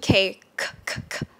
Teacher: aspirated K, as in the air coming out for now.